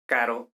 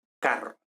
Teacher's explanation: que distingue dos consonantes roticas concretamente esta y esta es decir la r suave y la r fuerte o en términos lingüísticos percusivas r y vibrante r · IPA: /ɾ/ - /r/